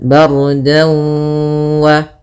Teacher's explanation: Kemudian dau ada fathatain bertemu dengan waw, maka apabila ada fathatain bertemu dengan waw hukumnya idgham bi gunnah atau ma'al gunnah, yaitu kita masukkan dannya ke waw, kemudian kita tahan dulu gunnahnya 2 harakat